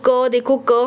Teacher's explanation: क हमारे पीछे कंठ में टच होता है। कंठ मतलब पीछे गले के बिल्कुल पीछे, ठीक है।